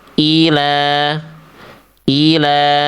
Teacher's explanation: Dua ketukan, dua hitungan. I satu harakat, la dua harakat. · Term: mad thabi'i